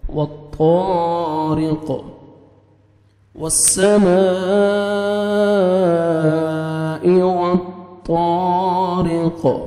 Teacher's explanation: آیت کمپلیٹ ہو رہی ہے، سٹاپ کریں گے، قاف ساکن ہو جائے گا، سکون جزم آ جائے گا، تو را زیر قاف جزم رق، ٹھیک ہے، سٹاپ کریں گے تو قاف ساکن ہو جائے گا